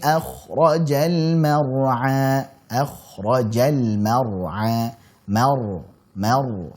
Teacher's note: Tipis mimnya, kemudian ra-nya tebal dan a jangan masuk hidung. Jangan mar'a, apalagi sampai tebal.